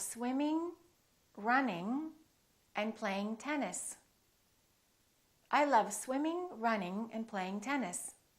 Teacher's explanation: don't release your tongue and don't just produce the N in the front. It's a sound in the back.